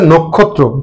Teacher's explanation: এই যে নয়ের সাথে ও আছে এবং পরবর্তী বর্ণটি আছে ক্ষিয় খ। ক্ষিয় খ থাকার কারণে নটা অ আছে, ওটা ও হয়ে যাবে, বিবৃত ছিল সংবৃত হয়ে যাবে।